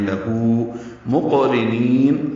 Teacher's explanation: قاف ساکن پہ قلقلہ ہے، را باریک ہے، نون کی زیر کو یا سے ملانا ہے، یا مدہ ہے، جب اس پر وقف کرتے ہیں تو لہو مقرنین، یہ نون لمبا ہو جاتا ہے۔